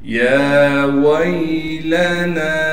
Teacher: یا پر کڑا زبر ہونے کی وجہ سے یا کو ایک الف کی مقدار کھینچیں گے، واو کو یا سے ملا دیں گے اس لیے کہ یا ساکن ہے، لام کو بغیر کھینچے پڑھنا ہے، نون کے بعد حروف مدہ میں سے الف ہونے کی وجہ سے اور مد ہونے کی وجہ سے 3 الف کی مقدار کھینچیں گے۔